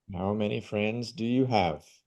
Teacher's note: quando for uma pergunta aberta e não uma pergunta que vai ter uma resposta de sim ou não, não vai para cima